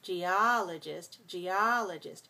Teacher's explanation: four syllables stress the second